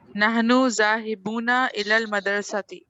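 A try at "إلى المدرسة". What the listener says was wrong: الی المدرستی، مدرستی نہیں ہوتا، ہم اردو میں اکثر مدرسہ مدرسہ پڑھتے ہیں نا، عربی میں ہوتا ہے مدرسہ، دال ساکن ہے، رو کو زبر ہے، الی المدرستی.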